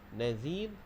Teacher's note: Kemudian bila kita waqaf, nazir, bila waqaf dia jadi hukum mad arid disukun, dan waqaf pastikan ra di hujung kita baca dia dengan nipis